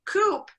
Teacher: you start rounding the lips too early and it affects the way you say that K so the K and key is actually phonetically different not the